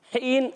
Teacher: حین، ہا یا زیر، ہی یا مدہ ہے، ہا حلق کے درمیان والے حصے سے یا مدہ کو ایک الف کھینچنا ہے